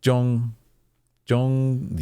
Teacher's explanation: there's no z sound which is significant J it's more of Jong Jong any zh sound is more of a j